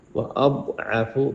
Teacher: بہت موٹا، عین حلق پہ زور دے کے. جندا، یہاں پہ اخفا ہے، غنہ کریں.